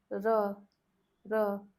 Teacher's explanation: In this R, we did not roll the tongue at all. Tip of the tongue just touches the palate and comes down.